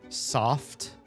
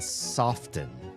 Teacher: The t is silenced as soon as you add the e n verb.